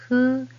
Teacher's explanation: Hu, this is more like HU sound rather than FU sound. So blow candle gently